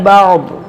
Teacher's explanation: جو دو زیر ہے اس کو ساکن کریں گے کیونکہ یہاں پر وقف کریں گے